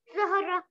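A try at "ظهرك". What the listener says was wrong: ज़हरक काफ भी है लास्ट में ज़हरक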